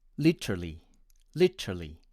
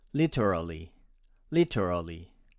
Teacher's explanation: my friends from india tend to pronounce it as literally literally with vowels of e and a omitted